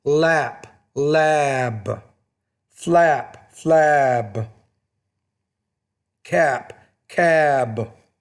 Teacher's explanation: if the B's at the end of the word, because it's a voice consonant, it makes the vowel longer, which precedes it.